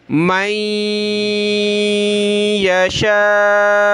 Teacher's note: یہ نون ساکن ہے، اس کے بعد والے ورڈ پہ تشدید ہے، تو یہاں ہم نے ناک میں آواز پیدا کرنی ہے، اخفا کرنا جس کو کہتے ہیں، ناک میں آواز پیدا کریں گے، اور یہاں شین کو ہم نے کھینچنا ہے مد کی وجہ سے۔